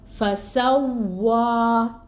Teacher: تو واؤ کو کھینچنا ہے ہمیں ایک الف کے برابر. فسوا، اور واؤ کی ادائیگی کے وقت ہونٹ گول.